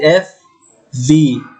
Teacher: হেয়ার lower lip make contact with the upper front teeth. Lower lip মানে নিচের ঠোঁট, contact with the upper front teeth, উপরের দাঁতের সাথে গিয়ে লাগবে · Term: লেবিওডেন্টাল